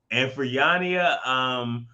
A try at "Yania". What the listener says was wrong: Yana. The I is silent.